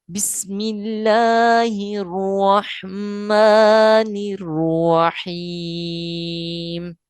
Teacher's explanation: جلالت اللہ کا لام زیر ہونے کی وجہ سے باریک پڑھا جائے گا۔ اس کے بعد ہر روح، ہا متحرک کو ڈائریکٹ را مشدد سے ملائیں گے، کیونکہ الف اور لام ساکن ہے تو یہ ختم ہو جائیں گے۔